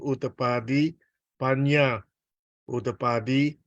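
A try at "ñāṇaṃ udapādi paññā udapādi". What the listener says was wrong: So this part, gotta be careful. There's no Y here actually, no Y. Even in the real life, no Y, yeah. Nyanang udapadi, yeah. Panya, panya, nya. It's a nasal. So so if you say YA or something, that's gonna be incorrect. This is incorrect. Plus it's Sanskrit, not Pali.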